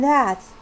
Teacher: the tip of the tongue touches the upper teeth